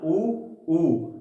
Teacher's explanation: ऊ का जब आप उच्चारण करोगे ना, ऊ तो आपके होठ गोल होंगे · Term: वृत्ताकार स्वर